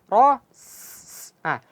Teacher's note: jadi sin keluarkan dulu hamsnya, aliran nafasnya. Ras. Setelah nafasnya mengalir, baru kita baca dhammahnya.